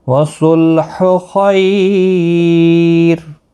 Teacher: خیالین ہے، تھوڑا نرمی کے ساتھ پڑھیں گے، اور وقف کی صورت میں را یہاں باریک پڑا جائے گا۔ جب بھی را ساکن ہوتا ہے تو پھر اس کے پیچھے اگر یا ساکن ہو تو ہمیشہ وہ باریک ہی پڑا جاتا ہے، یہاں پر بھی وقف مطلق ہے۔